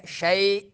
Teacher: یا لین کو تھوڑا سا لمبا کرنا ہے